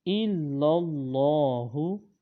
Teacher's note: جو لام ہے وہ اللہ تعالیٰ کے لام سے مل رہی ہے۔ اللہ تعالیٰ کے لام کو موٹا پڑھیں گے